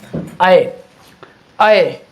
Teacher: कंठ का भी इस्तेमाल होता है और हल्का सा तालुक इस्तेमाल होता है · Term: ऐ वर्ण